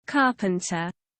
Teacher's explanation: Tapi kalau di British tuh R-nya tuh semu ya, jadi dia kayak samar ya.